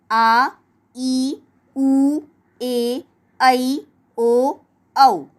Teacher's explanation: जिन स्वरों के उच्चारण में ह्रस्व स्वरों की तुलना में लगभग दुगुना समय लगता है, इन्हें दीर्घ स्वर कहते हैं।